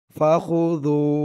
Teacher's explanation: জালের আওয়াজটা একদম নরম হবে, পাতলা হবে, জিহ্বার মাথা উপরের দাঁতের মাথার সাথে লাগবে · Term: জালের উচ্চারণটা